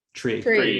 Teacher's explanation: The reason this happens is because your mouth has to move, your tongue has to move from the front of your mouth where the T sound is, right up here, to the kind of mid back, which is where the R sound is, very, very quickly